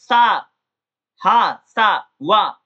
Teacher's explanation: जो हमारे जैसे जीभ है जैसे दांत है ये आपस में पास तो आते हैं लेकिन बीच में टकराते नहीं है और इसके बीच से जब हवा निकल जाती है उसी को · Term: संघर्षी व्यंजन